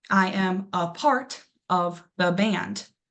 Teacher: So in the word apart, we first say uh and that right away we know that's our schwa sound because we don't say a part.